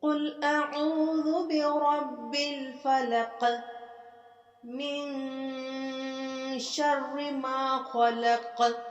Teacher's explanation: قاف پہ کلکلا کریں گے